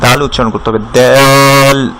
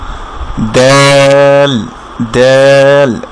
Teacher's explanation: উপরের দাঁতের গোড়ার সাথে আপনার জিহ্বার আগা লাগিয়ে দাল উচ্চারণ করতে হবে